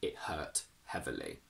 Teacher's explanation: it plus an h sound is the only case where we often use a glottal stop